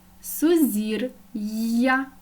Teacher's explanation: у слові сузір'я Ми чуємо р твердий приголосний А я вже позначає два звуки й а